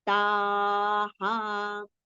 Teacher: Ta we have to prolong and then we have to take the visarga sound ha. Ta ha. Just keep the mouth open so that the ha sound will be clear.